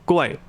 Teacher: a lot of Thais will drop the consonant cluster, particularly the R or the L. So for example, กล้วย the gla will just become g, กล้วย.